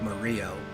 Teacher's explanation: that's not how you would pronounce that name in Italian. You actually wouldn't even, like, give it a hard R sound. It'd be like Mario.